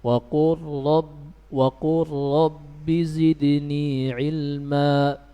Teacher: Huruf lam sukun bertemu dengan ra. Baik, kita baca. Wa qur rabbi zidni ilma. Lamnya sudah tidak dibaca ya.